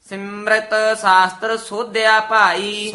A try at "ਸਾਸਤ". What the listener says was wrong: ਸਸਤਰ ਨਹੀਂ ਹ ਸਾਸਤ